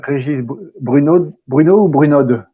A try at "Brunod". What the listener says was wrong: Alors, c'est un nom des Alpes, c'est Bruno. On ne prononce pas la finale, mais c'est pas grave, c'est comme vous voulez.